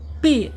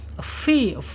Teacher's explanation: gigi seri bagian atas menyentuh perut bibir bagian bawah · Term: huruf fa